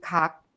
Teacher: the sound is made when the rear part of the tongue touches the soft palate also known as the vellum this sound has the shape when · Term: kiyok